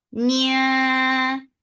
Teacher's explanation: You're hiding the sound of noon. You're going towards the makhraj of ta, and you're keeping the sound in your nose for a longer time. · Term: ikhfa